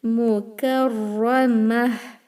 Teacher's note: Ra, emphasize it. Make it heavier, and this tai marbuta, the round ta again will convert to ha sakina.